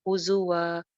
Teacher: ہزوا زا سیٹی کے ساتھ ہے